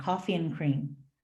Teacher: I wouldn't pronounce the D in and